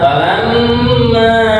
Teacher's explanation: ini mim tasydid dibaca gunnah, ukuran gunnah atau mendengungnya 2 harokat